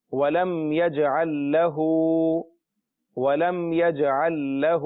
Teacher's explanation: ایک لام ساکن ہے، دوسرا لام متحرک ہے۔ لہذا یہ جب دو لام جمع ہو رہے ہیں تو آواز جو ہے یہاں رکے گی